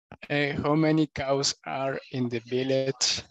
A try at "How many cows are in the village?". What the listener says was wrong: Uh-huh, but I cannot add the question mark if you are not adding the correct intonation. I will give an example. How many t-shirts can I buy?